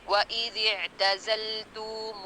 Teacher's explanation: میم پہ پیش، واو مدیہ، ہا پہ پیش، یہ والے لفظ میں پورے ہونٹوں کی گلائی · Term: پورے ہونٹ گول